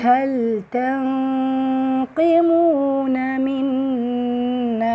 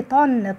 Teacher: بس هي الغنة بتاعت ما بين النون والقاف، غنة الإخفاء هي دي اللي هتتخن